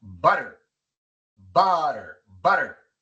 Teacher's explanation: La sílaba acentuada es la primera.